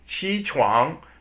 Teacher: Qi is san sheng, the third tone, and chuang is er sheng.